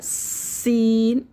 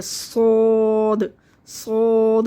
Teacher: اور صاد، جیسے ہم نے سین کو بڑا باریک پڑھا تھا، سین، ٹھیک ہے، یہی مخرج اس کے صاد کا ہے۔ اسی سین کو اگر ہم موٹا کریں گے تو یہ صاد میں چینج ہوگا، صاد، صاد منہ بھر کے پڑھنا ہے کیونکہ یہ موٹے حرفوں میں سے ہے۔